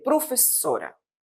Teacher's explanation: O duplo s es sempre pronunciado en portugués como si fosse un s de español. No es vibrante, surdo, professora normal, como si estiv a falar español.